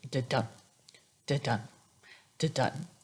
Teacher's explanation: it's an unstressed syllable followed by a stressed syllable, like a heartbeat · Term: iamb